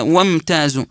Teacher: كلمه وامتازوا ميم ساكنه بعدها تاء في وسط هذه الكلمه يكون حكمها الاظهار الشفوي